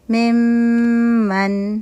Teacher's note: میم من، جیسے میم من، نون ساکن کے بعد میم آ رہا ہے، نون میم میں کمپلیٹ مرج ہو گیا اور 2 کاؤنٹ کا غنہ ہو رہا ہے